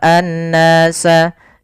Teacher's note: Kemudian pada lafal an-nasa di sini ada alif lam syamsiyah, yaitu alif lam yang kita tulis tapi tidak dibaca, langsung ke huruf nun yang tasydid